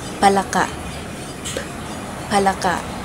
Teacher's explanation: Una, ang titik P na panlabi. Ang paraan ng artikulasyon nito ay pasara na walang tunog.